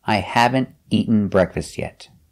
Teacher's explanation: You go to a stop T, eat, and you fall to the N. Eaten. I haven't eaten breakfast yet.